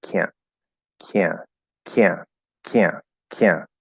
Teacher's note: like i was going to do a glottal stop but then i just dropped the t completely can't can't can't can't can't see it just kind of fades